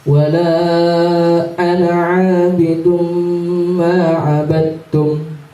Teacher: Seharusnya dibaca 2 harokat atau dua alif seharusnya. Tapi dibacanya cuman dibaca secara biasa, nggak ada panjangnya. Ya, dibaca idhar, dibaca asli.